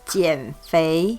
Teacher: that's a third tone and a second tone